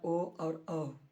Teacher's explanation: कंठ और ओष्ठ से होने वाला वर्ण का उच्चारण है ओ और औ